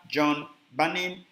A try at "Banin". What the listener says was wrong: So it's spelled B-A, but it's pronounced Benin. So John Jesse Benin. John Jesse Benin.